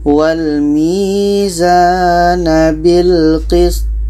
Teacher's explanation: Wal mizana bil qist. Nah, kebetulan to mati ini qalqalah ada pantulan.